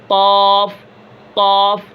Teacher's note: اب لہات یعنی کوے کے متصل یعنی جو ساتھ ملی ہوئی زبان کی جڑ جب اوپر کے تالو کے ساتھ ٹکر کھاوے گی، لگے گی، تو وہاں سے قاف ادا ہوگا